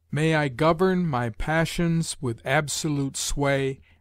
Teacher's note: the anapestic in which the accent rests upon every third syllable